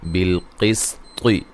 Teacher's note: قاف کو موٹا ادا کریں گے، طا کو موٹا ادا کریں گے